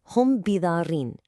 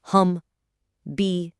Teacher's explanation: So, instead of a hard stop like "hum bi", it's totally different. The m sound kind of softens. It almost hides itself as it flows gently into the ba sound. You get this light nasal hum. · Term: concealed sound